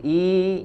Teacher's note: huruf i di sini hamzah dari aqsal halq ya, dari tenggorokan yang paling jauh